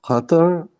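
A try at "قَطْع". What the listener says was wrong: Qata, with an ayn at the end, not a ra. Ayn. Qata.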